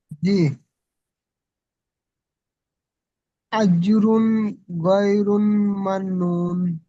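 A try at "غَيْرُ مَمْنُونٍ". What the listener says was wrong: হয়নি, গয় রুন নয়, গয় রু আছে, দেখেন শুধু র পেশ আছে, সব ঠিক হয়েছে, শুধু গয় রু।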